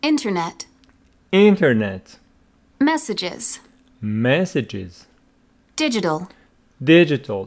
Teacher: all the three words carry their stress their primary stress on their first syllable